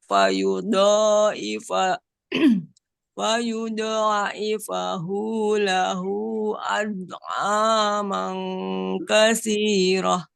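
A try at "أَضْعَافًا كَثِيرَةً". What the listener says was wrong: Bukan mang, fang, ad'afan.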